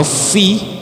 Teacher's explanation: Pertemuan gigi atas dengan bibir bawah dan dihembus. Fa, fi. Nah, ada angin keluar.